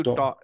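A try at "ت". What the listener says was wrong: ট এর মতো চলে আসে ভাই হ্যাঁ ইত ইত ট এর মতো আসতেছে না মাঝে মাঝে ঠিকই কিন্তু আসছে যে মাঝে মাঝে ত আপনার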